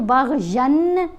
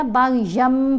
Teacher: یہاں دیکھ رہے ہیں نون ساکن ہے، اس کے بعد با ہے، تو یہاں بھی ہم نے من نہیں پڑھا، میم نون کی آواز کو میم میں بدل کر پڑھا گیا. یہاں یا کے اوپر دو زبر ہیں تو باغین نہیں پڑھا گیا، باغیم پڑھا گیا، کیونکہ یہاں بھی تنوین کے بعد با ہے. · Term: اقلاب